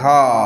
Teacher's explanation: ধয়ের সাথে আকার আছে, এতে স্বরধ্বনি ধা, দেখো উচ্চারণটা দেখো অনেকটা দীর্ঘায়িত হচ্ছে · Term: মুক্ত দল